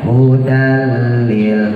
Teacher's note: Jadi huruf-huruf yang harokatnya cuma 1 ya, saya sering namanya juga pengalaman nih ya, sering digentak, jangan digentak ya, jangan hudal ya, jangan wahwa, jangan, biasa aja hudal lil, lamnya idgham bila gunah ya, tanwin ketemu lam, jangan didengungin. Hudal lil, masukin aja langsung.